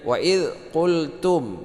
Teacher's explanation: waidz qultum mim mati bertemu dengan ya. Ini idhar syafawi tidak berdengung. Ya ini panjang dua harakat.